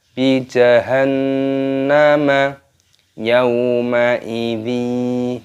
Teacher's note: Nun tasdid hukumnya dibaca gunnah. Cara membacanya yaitu dengan cara didengungkan.